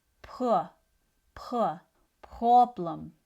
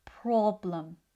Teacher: However, in other languages, the P is more voiced, becoming more of a pa pa problem So, rather than being a light P, it starts to sound like a deeper B sound. problem In English, P is voiceless. So, the vocal chords don't vibrate.